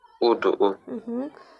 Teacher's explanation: u burada həm qalındır, həm dodaqlanır, həm də qapalıdır da. Ona görə səbuhi olur.